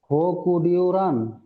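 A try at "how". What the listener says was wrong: হো না, হাউ। হাউ মানে হাউ বলতে আও।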